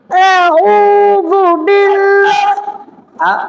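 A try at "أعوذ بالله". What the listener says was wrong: এখানে তোমার টান হয়ে যাচ্ছে, ঠিক আছে? এভাবে না। আউযু বিল্লাহি মিনাশ শাইতানির রাজীম।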